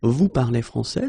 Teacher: We just need to raise the voice at the end.